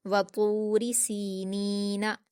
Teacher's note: सीन पर या मद्दा है 2 हरकत खींचकर पढ़ेंगे। नून पर भी या मद्दा है से भी 2 हरकत खींचकर पढ़ेंगे।